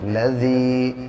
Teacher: لام کے اوپر زبر ہے، زبر کو جلدی ادا کریں، تھوڑا بھی نہ کھینچیں. یا ساکن سے پہلے ذال کے نیچے زیر ہے اس لیے یا مدہ ہوگا اور اس کو تھوڑا کھینچ کے پڑھتے ہیں